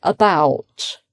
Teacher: the stress is on bout, and the beginning, the first syllable, is unstressed. And that shows how schwa comes on the unstressed syllable